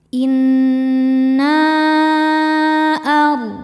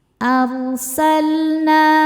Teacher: Ro sukun dibaca secara tafkhim ya, karena sebelum ro sukun ada harokat fathah ya, maka ro-nya dibaca tebal.